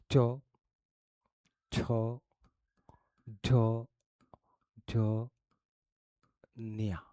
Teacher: okay આને ચ વર્ગની લાઈન અથવા તો તાલુ વ્યંજન ટાલુ વ્યંજન જીભ છે આપણી એ તાળવે ચોટતી હોય છે આ શબ્દ બોલતી વખતે